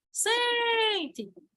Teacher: E sente, a sílaba tônica é sem. Sente! É um exemplo.